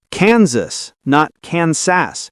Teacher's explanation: The S is voiced like Z.